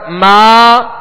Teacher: کھڑا زبر ایک الف کے برابر کھینچ کر ادا کریں گے